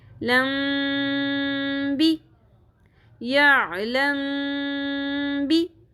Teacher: میم ساکن کے بعد حرف با آ رہا ہے، اس لیے ہم یہاں پر میم ساکن کی آواز کو با سے ملاتے ہوئے غنہ بھی کریں گے